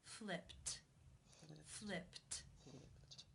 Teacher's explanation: In the infinitive, the final sound of the verb is p, which is unvoiced. Therefore, it is case 1, and the ed is pronounced as a t.